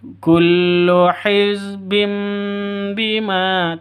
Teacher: Tanwin bertemu dengan ba. Jadi tanwin bertemu dengan ba itu dengung iklab. Ya. Jadi mengganti sifatnya ba menjadi mim. Hizbim mingkem seperti itu, walaupun sifatnya ba itu sama dengan mim ya, sama-sama mingkem karena sama-sama huruf bibir ya.